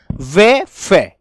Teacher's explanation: व फे दंत प्लस ओष्ठ दोनों के मेल से बोली जाती है। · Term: दंतोष्ठ ध्वनि